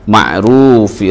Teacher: ru-nya ini adalah tafkhim karena ra berharokat dumah. Ruf ini adalah mad arid lis sukun.